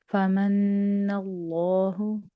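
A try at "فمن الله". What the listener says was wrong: ٹھیک ہے جی، نیکسٹ آیا.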